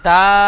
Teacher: আলিফ মাদ্দা এক আলিফ পরিমাণ টান দিয়ে পড়তে হয়। ওয়াও এর উপরে উল্টো পেশ এসেছে, উল্টো পেশ ঔ মাদ্দার সমতুল্য, সুতরাং উল্টো পেশকে ঔ মাদ্দার মতো এক আলিফ পরিমাণ টান দিয়ে পড়তে হয়। দালের উপরে জাবার এসেছে, জাবারটি হারাকাত, হারাকাত তাড়াতাড়ি পড়তে হয়, টান দেওয়া নিষেধ।